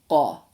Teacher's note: It's like a k from the very back of your throat. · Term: qa sound